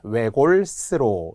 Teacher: 외골이라는 명사에 역시 모음의 조사가 와서 연음이 된 후 된소리, 외골스로 이렇게 발음하는 건데요.